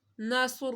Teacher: صاد حروف مستعلیہ ہے، اس کو موٹا پڑھنا ہے، سیٹی بھی نکالنی ہے، اور لفظ اللہ سے پہلے پیش ہے تو لفظ اللہ کو موٹا پڑھنا ہے۔